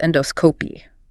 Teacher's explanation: Stress on the dos.